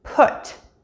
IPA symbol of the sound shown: ʊ